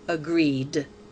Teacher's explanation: To make the verb mean did agree before now, remove the E and add ED to form the word agreed. The ED is pronounced D because agree ends with a voiced sound.